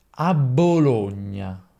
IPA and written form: a bˈboloɲɲa (a Bologna)